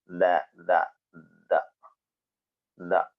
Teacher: മൂന്നക്ഷരങ്ങളും വരുന്നത് നാവിന്റെ തലയും മേലെ മുൻപല്ലിന്റെ മുരടും